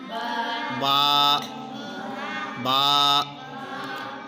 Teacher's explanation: دونوں ہونٹوں کے تر حصے سے با کو ادا کرتے ہیں